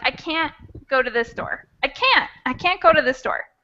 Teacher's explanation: that t is not really fully pronounced it's just like a stop